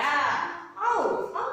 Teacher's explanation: ಐ ಮತ್ತು ಔವನ್ನ ಸಂಧ್ಯಾಕ್ಷರಗಳು ಅಂತ ಹೇಳ್ತಿವಿ ಅಂದರೆ ಅಲ್ಲಿ ಎರಡು ಎರಡು ರೀತಿ ಶಬ್ದ ಕೇಳಿಸುತ್ತೆ ನಮಗೆ